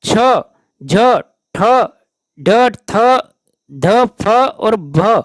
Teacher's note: वे व्यंजन जिनके उच्चारण में श्वास अधिक मात्रा में निकलती है उन्हें महाप्राण व्यंजन कहते हैं